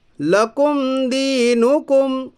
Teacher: میم ساکن کی آواز کو ظاہر کر کے بلا گناہ کے جلد پڑھیے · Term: اظہار شفوی